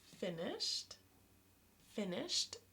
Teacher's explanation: SH is a voiceless sound, so it sounds like a T at the end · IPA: /t/